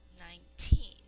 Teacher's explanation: when we say 19 this emphasis or the accent is on the teen